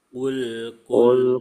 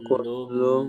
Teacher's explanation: ini kof nggak ada udara yang ini kaf ada udara